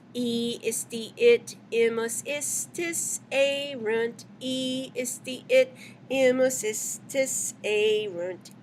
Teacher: Isti, the first I is short, the last one is long. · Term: long by nature